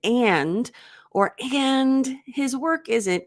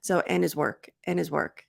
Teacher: But if you're not emphasizing and you're just speaking naturally, and his work, a lot of times, probably most of the time, Americans will reduce the D in and.